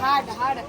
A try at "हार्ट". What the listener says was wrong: हार्ड नाही हार्ट म्हणायचं